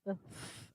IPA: θ